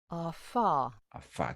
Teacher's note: Existe la fricativa, por ejemplo, esa fricativa, afa, AFA, que es como cuando se sopla, cuando se sopla las velas del cumpleaños, la fricativa bilabial